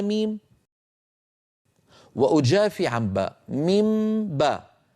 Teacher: وفيه شبه بالإدغام من حيث إن المخرج ارتفع ارتفاع واحد عن الحرفين، أطبقنا على ميم وجافينا الشفتين عن باء. هذا العمل هو الذي يكون في حال القلب.